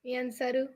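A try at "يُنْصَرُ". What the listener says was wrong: Close, but we want the passive should be u. Yun saru.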